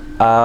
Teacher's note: حمزہ کھڑا زبر آ، ایک الف کے برابر کھینچیں گے، کھڑی حرکات ہے